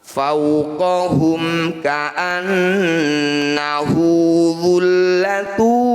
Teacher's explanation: Lin itu artinya lembut, bunyi waw sukun ini harus dibaca lembut atau lunak. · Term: matlayin